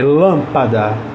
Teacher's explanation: a sílaba mais forte dela é a anti penúltima